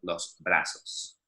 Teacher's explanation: Here in Latin America, Z and S pretty much sound identical